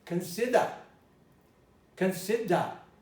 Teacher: If you spoke a British dialect, you'd probably say, if you're not in Ireland, this would be consider. Consider. You would ignore the R entirely.